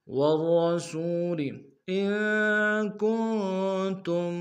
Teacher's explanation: ان میں نون ساکن غنہ کریں گے، کن میں بھی نون ساکن غنہ کریں گے۔ · را کے اوپر تشدید زور دیں گے، را کو موٹا ادا کریں، سین کو واو کے سامنے لیں گے، واو مدہ ایک دال میں کھینچیں گے۔